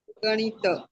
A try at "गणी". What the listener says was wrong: नहीं, गणी ता को आगे के शब्द में जोड़िएगा, गणी तक ठीक है। नहीं, गणित शब्द नहीं है। देखिए शब्द ये गणित नहीं, ओनली गणी, महिम राज गणी तच्छिष्य।